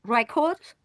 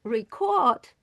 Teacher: we have two syllables, but the stress on the first one will give a different meaning if we give a stress on the second syllable.